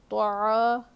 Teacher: طا پہ زبر ہے نہیں کھینچنا ہے، طا حروف مستعلیہ میں سے موٹا پڑھیں گے، عین الف زبر آ، الف مدہ ہے کھینچ کر پڑھیں گے ایک الف کے برابر